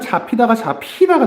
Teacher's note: 예사 소리와 히읗이 만나서 거센 소리가 되는 현상, 예사 소리와 히읗이 만나서 거센 소리가 되는 현상을 우리가 자음 축약이라고 합니다.